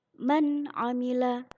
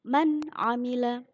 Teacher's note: ada nun sukun bertemu dengan ain dibaca dengan jelas. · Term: idhar